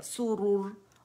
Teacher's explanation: सुरुर, रोर नहीं पढ़ेंगे, रू है, रुर, ठीक है। इसको पूरा कंप्लीट रोलिंग करेंगे